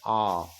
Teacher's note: मतलब मुख यहाँ आ गया और ये जैसे ओ आ, जैसे किसी को हम बुला रहे हैं आ करके आ, तो आ करते हैं तो देखिए जो होंठ है वो पूरा फैल जाता है, मुंह पूरा खुल जाता है आ, और जीभ, तो जीभ और मुंह के बीच की जो दूरी है वो बहुत ज्यादा हो जाता है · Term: विवृत